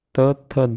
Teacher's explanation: त थ दंत वर्ग कहलाते हैं